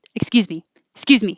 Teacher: sound more friendly go higher excuse me excuse me excuse me if you don't want to sound friendly just go down